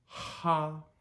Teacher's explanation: the H is probably going to be 30 to 50% stronger than what we would say in English · H just like it is in English but as you guessed a little more forceful